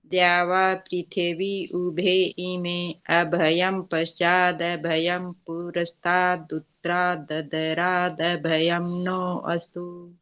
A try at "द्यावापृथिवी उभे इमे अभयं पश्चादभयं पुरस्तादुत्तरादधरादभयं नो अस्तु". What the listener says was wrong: हाँ, बाकी ठीक है। उत्तरात को ऐसे बोलते हैं, उत्तरात, उसको पूरा त बोलना, ठीक है?